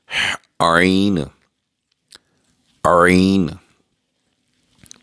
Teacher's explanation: یہ وسط حلق سے ادا ہوگا ہا کی طرح صاف آواز میں